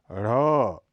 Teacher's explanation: इस वर्ण का प्रयोग शब्द के आदि में कभी नहीं किया जाता। ढ़, यह महाप्राण घोष ध्वनि है, इसका उच्चारण उत्क्षिप्त मूर्धन्य माना जाता है।